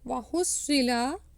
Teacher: sad is full mouth